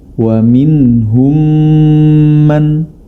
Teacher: Cara membacanya adalah dengan dimasukkan huruf mim tersebut ke dalam huruf mim